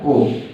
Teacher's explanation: ओ और जो आव होता है वो दोनों कंठ और ओष्ठ दोनों से बोले जाते हैं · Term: कंठोष्ठ ध्वनि